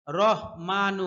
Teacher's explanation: হা এর উচ্চারণ স্পষ্ট করতে হবে কণ্ঠনালীর মধ্যখান থেকে